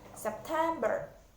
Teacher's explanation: circles, bigger circles. Jadi penekanannya ada di tengah.